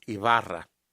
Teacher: the B is a very soft B that's almost a V. So the Wybera and of course is the kind trilled R.